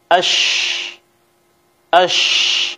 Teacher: Kemudian yang ketiga, bahwasanya huruf shin ini pada saat kita ucapkan pangkal lidah kita tidak terangkat. Saat kita mengucapkan huruf shin, bagian tengah lidah terangkat, artinya mengarah ke langit-langit, pangkal lidah tidak terangkat. Kalau seandainya pangkal lidah terangkat, maka huruf sin akan keluar dengan tebal.